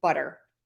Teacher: a flap, which I teach in my lessons every week as a fast D sound. It sounds like that in butter.